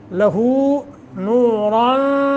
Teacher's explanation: باریک پڑھیں گے ما قبل کسرہ کی وجہ سے لہو نوران نون تنوین کے بعد آگے فا ہے اخفا تو اخفا کریں گے